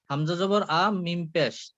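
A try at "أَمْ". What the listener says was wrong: মিমের উপরে এটা হচ্ছে সাকিন, পেশ না। দুইটা একসাথে, দুইটা একসাথে পড়তে হবে।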